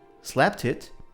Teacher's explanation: So, slapped and it get linked. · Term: connected speech